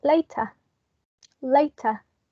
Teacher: we wouldn't pronounce the final r sound